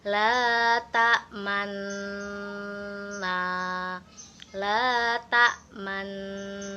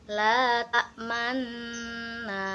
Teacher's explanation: Nun sukun yang pertama adalah tempat yang kita ismamkan atau kita monyongkan bibir seolah mengucapkan huruf nun, tetapi hanya gerakan bibir saja atau tanpa disertai dengan suara